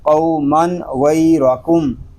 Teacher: قاف اور غین اس لیے پر ہیں کہ یہ دونوں حروف مستعلیہ میں سے ہیں۔ تنوین میں اظہار اس لیے ہو رہا ہے کہ تنوین کے بعد حروف حلقی میں سے غین آ گیا ہے۔